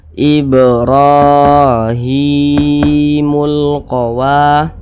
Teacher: Ini huruf H, di bawahnya ada alif kecil yang berdiri di bawah huruf H, maka huruf H dibaca panjang. namanya mat tabi'i, panjangnya 2 harokat atau kira-kira 2 ketukan. Ibrahimul qawa, wa dibaca panjang.